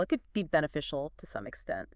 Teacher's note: That slight upward tilt invites discussion. It's less final. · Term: rising tone